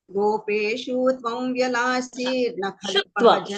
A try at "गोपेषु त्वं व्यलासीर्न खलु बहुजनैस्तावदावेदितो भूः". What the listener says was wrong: Shu is short, don't make it dirgha, and there will be a pressure, there will be a dvitvasa. Gopeshu tvam vyalasi.